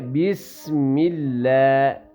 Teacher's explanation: بیس سین کی سیٹی کی طرح آواز آئے گی